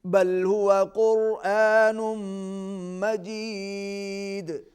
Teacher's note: قرآن مجید, تنوین کو میم کے ساتھ ملائیں گے, غنہ ہوگا. مجید دال پر قلقلہ ہوگا